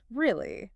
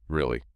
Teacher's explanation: That's pure, genuine surprise. The high-rising tone is basically asking, are you serious? I can't believe it. It's an open, inquisitive sound.